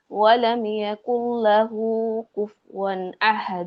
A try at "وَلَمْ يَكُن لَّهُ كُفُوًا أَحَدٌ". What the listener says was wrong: ওয়ালাম ইয়াকুল লাহু, লামটা বেশি মোটা হয়ে গেছে। ওয়ালাম ইয়াকুল লাহু। আচ্ছা আপু, আর আপনার হচ্ছে সবগুলো কলকলার উচ্চারণটা খুব বেশি হালকা হয়ে গেছে, অস্পষ্ট হয়ে গেছে। আগে সব জায়গায় কল্পনা গুলো স্পষ্ট হবে, এমনিতে মাশাআল্লাহ